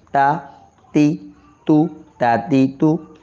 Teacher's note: زبان کی نوک اوپر کے 2 دانتوں کی جڑ میں